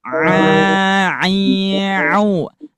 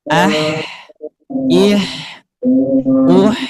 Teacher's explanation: Ketika ain diucapkan, katup epiglotis menempel atau menekan ke dinding tenggorokan. Kalau huruf H, huruf H tidak menempel, tapi memberikan celah. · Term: huruf ain